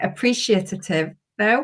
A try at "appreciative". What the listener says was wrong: Appreciative. You said titty in the middle of it. Appreciative.